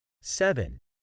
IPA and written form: ˈsɛvən (seven)